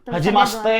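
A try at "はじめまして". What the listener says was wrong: Haji mashite. Oh, Hajime. Hajime mashite.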